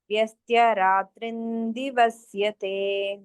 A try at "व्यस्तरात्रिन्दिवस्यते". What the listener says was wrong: not व्यस्त्य व्यस्त okay